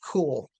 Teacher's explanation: There's actually a little puff of air after the sound.